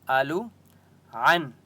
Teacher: نون کے اوپر سکون ہے لیکن یہاں پر اخفا نہیں ہوگا کیونکہ آگے حرف حلقی ہے، حمزہ ہے. اصحاب صاد کے اوپر سکون ہے، حمزہ کو صاد کے ساتھ ملائیں گے اور صاد مستعلیہ میں سے اس لیے صاد کو موٹا پڑھیں گے.